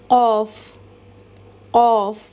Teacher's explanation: The letter Qaf is articulated from the deepest part of the tongue, as I said, and what lies opposite to it from the roof of the mouth in the area of the soft palate.